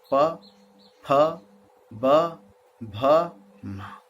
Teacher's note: ओष्ठ यानी होठ, नीचे के होठ को अधर कहते हैं, ऊपर को ओष्ठ। जब दोनों टकराएं तो दोनों होठों के सटने से जो ध्वनि उच्चारित हो उन्हें ओष्ठ्य व्यंजन ध्वनि।